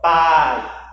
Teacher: Você observa que o A ele tem um som mais forte, mais tônico que o I. Sério. A palavra foi separada, porém em uma sílaba nós temos 2 vogais que se encontram. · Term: ditongo